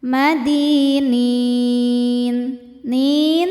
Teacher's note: jika berhenti hukumnya mad arid lukun karena mad thobi'i bertemu dengan huruf yang disukunkan karena waqaf